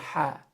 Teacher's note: So Ha and Kha, these 2 letters are in the throat. Ha is in the middle of the throat. Ha is in the middle of the throat along with this letter right here, ayn.